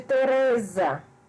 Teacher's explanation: Teresa, a sílaba tônica é re.